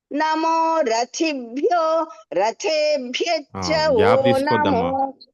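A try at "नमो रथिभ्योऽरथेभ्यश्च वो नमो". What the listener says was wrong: గ్యాప్ తీసుకోవద్దు అవగ్రహం ఉంది కాబట్టి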